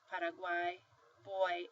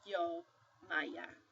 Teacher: sometimes your Y is going to sound like a semivowel it's soft